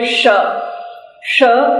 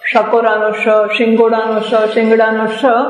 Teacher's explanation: પહેલો મીંડા વાળો શ હોય, જેને તાલવ્ય કહેવાય. શ શ જીભ તાળવાને અડકે અને બોલાય એ શ